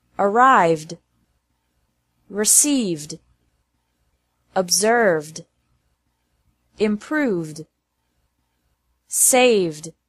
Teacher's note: it's also pronounced like D after verbs ending with a V sound